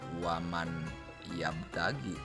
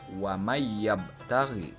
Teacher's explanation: Bukan waman yabtagi, tetapi huruf nun itu dimasukkan ke dalam huruf ya. Huruf nun dileburkan ke dalam huruf ya, sehingga cara membacanya wa mayyabtaghi. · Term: idgham bigunah